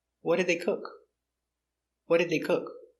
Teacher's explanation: we stress important words the information word what